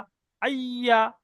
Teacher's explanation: জিভের মাঝখানটা উপরে তালুর সঙ্গে লেগে যাবে, একটু ফুলে উঠে উপরের তালুর সঙ্গে লেগে